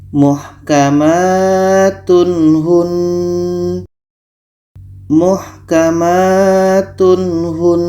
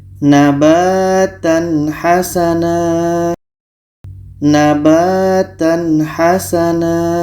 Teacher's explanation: Ha adalah huruf izhar halki, maka ini dibaca jelas. Tanwin jelas, ha jelas, dan tidak ada dengung.